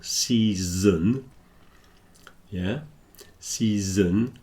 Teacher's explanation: words that are very similar season and session so season so starts with a s long e sound and then a z in the Middle